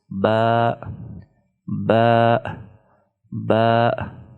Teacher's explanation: Ba is pronounced from touching the inner parts of the 2 lips. When inner parts of the 2 lips are touching each other, ba is pronounced.